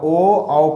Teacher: ओ औ का उच्चारण कंठ ओष्ठ दोनों से होता है